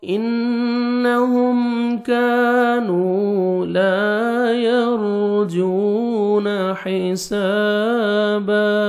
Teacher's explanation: انہم نون مشدد غنہ کریں گے، نوز میں ساؤنڈ لے کے جائیں گے